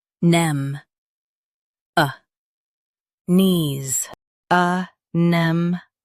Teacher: Emphasize nem and soften knees.